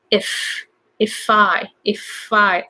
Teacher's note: So a lot of Japanese people say if I, adding extra vowel. So you can go just if I, as if it's just one word.